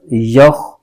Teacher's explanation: خا بھی حروف مستعلیہ کا حرف ہے، اس کو بھی پر کر کے پڑھنا ہے۔ یا خا زبر یخ، تو زبر تو، یخ تو، ف پیش فو، یخ توفو۔